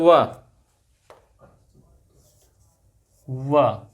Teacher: वा क्या है? दंत, दंत प्लस ओष्ठ। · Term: दंत ओष्ठ